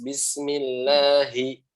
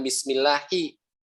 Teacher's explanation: Pada lafaz Allah yang saya bilang, H-nya harus jelas